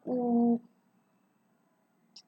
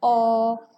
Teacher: ਇਹਨਾਂ ਨੂੰ ਉਚਾਰਨ ਸਮੇਂ ਜਿਹੜੀ ਬੁੱਲਾਂ ਦੀ ਸਥਿਤੀ ਆ ਉਹ ਗੋਲ ਹੋ ਜਾਂਦੀ ਆ